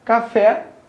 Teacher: café, cuja sílaba tônica é o fé